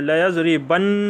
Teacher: ناک میں آواز گونجتی ہے، زور لگتا ہے تشدید پہ، تو اس وجہ سے اس کو ثقیلہ کہتے ہیں۔